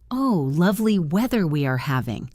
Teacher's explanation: The words say the weather is lovely, but the tone is flat or annoyed, and the context tells you they mean the opposite. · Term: sarcasm